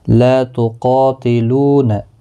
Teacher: لا تقاتلون، لا الف مدہ ہے، قا الف مدہ ہے، لو واو مدہ ہے، تینوں کو ایک ایک الف کی مقدار کے برابر کھینچ کر پڑھیں گے۔ قاف حروف مستعلیہ ہے، پر پڑھا جائے گا۔ · قاف حروف مستعلیہ ہے، پر پڑھا جائے گا۔ مستعلیہ کے بعد جب بھی ایک ہی کلمے کے اندر الف بھی آتا ہے وہ بھی پر پڑھا جاتا ہے۔